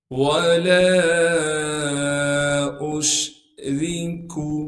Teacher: قل انما ادعو ربی ولا اشرک، واو کو بغیر کھینچے پڑھیں گے، لام کو ایک الف کے مقدار کھینچنا تھا لیکن لام کے بعد چھوٹی مد ہونے کی وجہ سے لام کو 3 الف کے مقدار کھینچیں گے · لام کے بعد حمزہ ہے، حمزہ کو شین سے ملائیں گے کیونکہ شین ساکن ہے۔ را کو باریک کر کے پڑھیں گے کیونکہ را کے نیچے زیر ہے۔